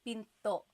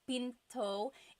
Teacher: Do you hear the glottal stop when I say pinto?